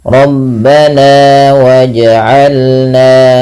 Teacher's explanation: Kadar dua harakat hanya menaikkan suaranya sedikit saja. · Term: mad thabi'i